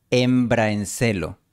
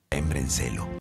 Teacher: La pronunciación recomendada es embraencelo, con una transición suave de la A a la E